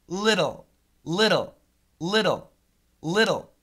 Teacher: it's a flap T sound with a dark L